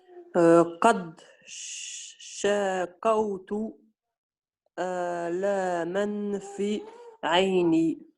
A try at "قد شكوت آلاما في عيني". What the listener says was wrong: Ouais, bon, pas d'erreur, sauf que pour la lecture un peu plus fluide, qad shakawtu alaman. Alaman ici, j'ai entendu, j'ai pas très bien entendu ça, donc alaman fi aini.